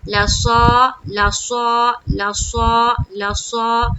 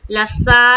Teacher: صاد کیا کریں گے، منہ بھر کر نکالیں گے. صاد موٹے حروف میں سے ہے، بولڈ لیٹرز.